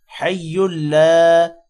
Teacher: لام کے بعد الف ہے، تھوڑا سا لمبا کریں گے